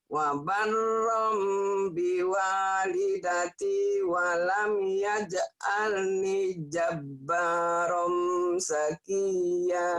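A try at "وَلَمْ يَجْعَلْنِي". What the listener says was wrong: Walam yaj'alni panjang.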